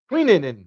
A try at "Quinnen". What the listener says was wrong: No, because you have E's in there if it was Quee. Quinn.